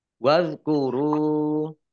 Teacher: dal sukun itu bukan kolkolah, jangan dipantulkan